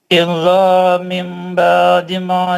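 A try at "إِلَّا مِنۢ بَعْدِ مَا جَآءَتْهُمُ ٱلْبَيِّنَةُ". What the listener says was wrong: نہیں، میں بول رہا ہوں غنہ کرو، آپ نہیں کر رہے. الا من بعد اب یہ ماجا تھمل میں من بعد میں جو غنہ ہے وہ 2 حرکت کا ہے. ماجا کا جو مد ہے وہ 4 حرکت کا ہے.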